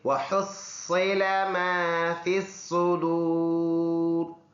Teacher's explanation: ح گلے سے صاف کر کے اور صاد منہ بھر کر ادا ہونے والا